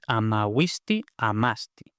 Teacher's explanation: lo que se pierde en este caso es la sílaba acentuada